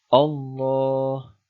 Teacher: Yang ketiga, Allah, bacaan tafkhim atau tebal karena ada lam jalalah didahului fathah